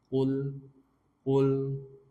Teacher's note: Jangan pula qul a'u. Kalau qaf sudah jelas dia di aqsa lisan, pangkal tenggorokan yang paling dalam.